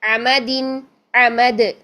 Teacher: دال کو ہلائیں گے کیونکہ ہم اس پر سٹاپ کر رہے ہیں.